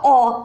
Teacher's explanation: इसमें आपका जीभ देखिए कहीं टच नहीं करेगा, अ डायरेक्ट कंठ से